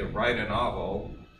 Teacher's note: what could be a T could also be a tap even across words · So notice you could say write a novel, like I did, and notice it's not a T, it's not a glottalized T, it's not a glottal stop. It's in fact a tap. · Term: English flapping